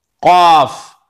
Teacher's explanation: زبان کی جو جڑ ہے پچھلے کا حصہ ہے اس کو تالو سے ملا کر قاف ادا ہوتا ہے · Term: بڑی قاف